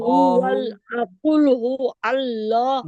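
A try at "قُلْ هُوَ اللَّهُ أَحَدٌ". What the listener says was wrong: हु अल नहीं, हुवल। हुवल हुवल। कुल हुवल लाहु। अहद, अहद। अल्लाह नहीं, वल्लाह, वल्लाहु।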